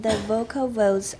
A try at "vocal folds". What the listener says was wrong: When the vocal what? Folds, not V. Folds. Vocal folds.